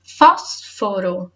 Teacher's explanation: o fós é a sílaba tônica.